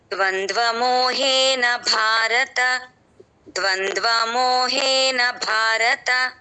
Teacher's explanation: ద్వంద్వమోహేన భారత సంయుక్తక్ష స్టార్టింగ్ లోనే ఉందండి ద్వంద్వ చూసుకోవాలి క్లియర్ గా పలకాలి సున్నా తర్వాత వచ్చిన త్వాన్ని వత్తి పలకక్కర్లేదండి అది పలకకూడదు కూడా సున్నా తర్వాత ఒత్తులు కానీ రకారం కానీ ఉంటే దాన్ని